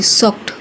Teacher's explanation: When a word ends with the hard sound like k in sock, we don't add an extra part. We just add t sound to the end.